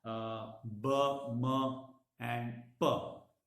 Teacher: both the lips are used while articulating these 3 sounds so they are termed as bilabial